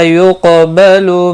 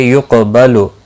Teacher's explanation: قاف ساکن پر قلقلہ ہوگا، قاف مستعلیہ بھی ہے